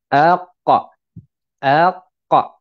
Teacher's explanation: Mana pangkal lidah tu kita tekan dekat langit-langit lembut. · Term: huruf qaf